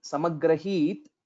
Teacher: when we say samagrahit, this is just a half takara. So most of the times what will happen is we will be unknowingly pronouncing it as samagrahita, like we will be almost saying it as it is a full takara, but it is a half takara.